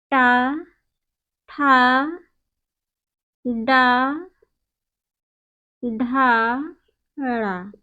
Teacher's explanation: जो दंत और तालु के मध्य का भाग है उसी को मूर्धा कहते हैं। और जब इन वर्णों का हम सब उच्चारण करते हैं तो जिह्वा जो है मूर्धा का स्पर्श करती है, इसलिए इन वर्णों का उच्चारण स्थान मूर्धा होता है।